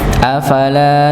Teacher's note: Afala, lanya dibaca dua harakat